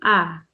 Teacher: the alif is an ah. It comes from inside your throat, so basically like a soft sound, ah, rather than ah.